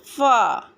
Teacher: اوپر کے اگلے دونوں دانتوں کی نوک جب نیچے کے ہونٹ کے اندر والے حصے سے لگے تو فا ادا ہوتا ہے